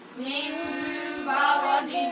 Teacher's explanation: با ہے حرف اقلاب، لہٰذا نون کو میم سے بدلیں گے